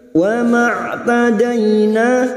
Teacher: Dai fathah bertemu ya sukun kita lunakkan.